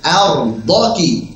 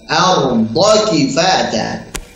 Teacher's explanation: Jangan dipanjangkan ya. Arda kifat, jangan dijeda. Tapi disambung.